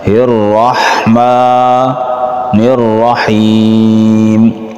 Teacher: یا مدہ ہے، اس کو کھینچیں گے ایک الف کے برابر، وقف کی وجہ سے پھر اس کی مقدار اور زیادہ ہو جائے گی۔